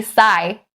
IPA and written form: saɪ (sigh)